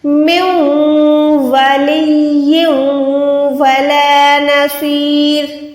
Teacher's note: نون ساکن کے ساتھ واو کو ملا کے یعنی میم نون واو تینوں کو ملا لیا، گنا کیا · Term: ادغام گننے والا